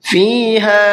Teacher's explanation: فا کو بھی کھینچنا ہے اس لیے کہ یا مدہ کا قاعدہ ہے، اور ہا کو بھی کھینچنا ہے اس لیے کہ الف مدہ کا قاعدہ ہے۔